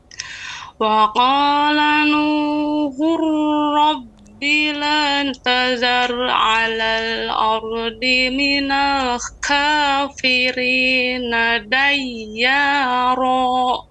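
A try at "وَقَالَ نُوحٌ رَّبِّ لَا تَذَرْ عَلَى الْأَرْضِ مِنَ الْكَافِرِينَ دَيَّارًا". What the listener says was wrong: Ya, perhatikan pada kata ha. Ya, lebih lembut lagi pengucapan ha. Wa qala nuhu hu. Ya, kemudian nuhur rabbi la tadhar, ra-nya tebal.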